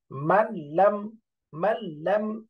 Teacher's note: গুন্না ছাড়া মিলাইয়া পড়তে হবে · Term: গুন্না ছাড়া ইদগাম